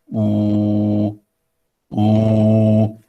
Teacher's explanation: 8, close, back, rounded vowel.